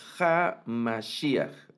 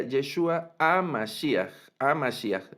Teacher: Y en ocasiones una variante de pronunciación sería Yeshua a Mashiach, no Ja, sino a Mashiach, y aunque está la Hei, no toma ningún sonido